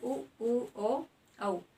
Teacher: वृत्त होता है आपका गोल, ठीक है, वैसे वृत्तमुखी स्वर जिनका उच्चारण करते इसमें हमारे होंठों की स्थिति कैसी होती है, गोल होती है